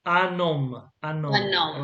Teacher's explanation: The H is like it's not there, okay? So the N and the O go together.